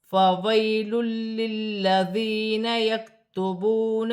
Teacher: یا ساکن سے پہلے زبر ہے، یالین بنے گی، اسے کھینچا نہیں جائے گا